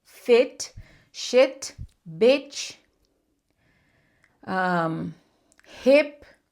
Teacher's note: Então, onde está escrito um I sozinho vai ser curto, vai puxar para esse E de elefante.